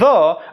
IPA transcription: ð